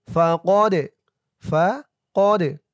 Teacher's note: দাল কলকলার হরফ ধাক্কা দিয়ে পড়তে হবে